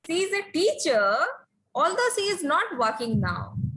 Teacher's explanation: we can use rising tone to show the sentence is not finished